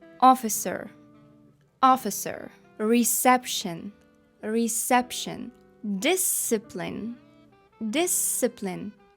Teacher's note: чуєте звука ц немає взагалі